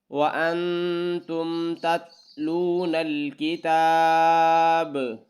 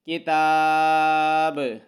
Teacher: با پر کلکلا ہے یعنی آواز کو ہلانا ہے